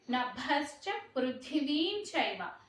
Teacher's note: ఆ నభశ్చలో భా అనేది మహాప్రాణాక్షరం అండి.